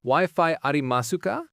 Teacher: remember that rising intonation on ca turns it into a question